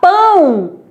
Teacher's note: Quando eu falar pão, esse O sai o som de U. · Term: semivogal